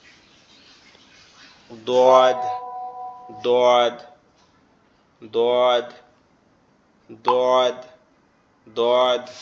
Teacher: দোয়াদটা আমাদের জিহ্বার গোড়া উপরের মাড়ির দাঁতের সঙ্গে লাগবে, জিহ্বার গোড়া উপরের মাড়ির দাঁতের সঙ্গে।